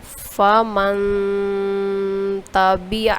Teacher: جیسے پڑھیں گے اس کو: فَمَن تَبِعَ، یعنی کہ من، یہاں پہ یہ جو ہم نے غنہ کیا ناک میں آواز لے کے جاتے ہیں، اس کو بولتے ہیں غنہ۔ اور یہ ایک الف کے برابر ہوتا ہے۔